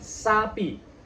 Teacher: ketika gigi kita bersentuhan, dalam rongga kita sedikit ada desis.